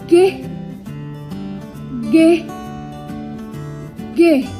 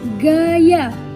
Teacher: Konsonan ini merupakan konsonan yang dihasilkan oleh belakang lidah sebagai artikulator dan langit-langit lembut sebagai artikulasi. Contoh huruf dalam konsonan ini yaitu G. G merupakan hambat bersuara.